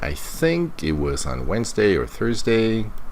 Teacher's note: notice the rising intonation showing uncertainty